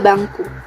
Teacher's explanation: Pada kata bangku, bunyi fonem N berubah menjadi eng karena dipengaruhi bunyi fonem K. N dan eng merupakan variasi bunyi alofon tergantung lingkungan fonologis.